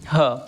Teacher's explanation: ह कंठ से निकलने वाला है। ठीक है? कंठ व्यंजन है।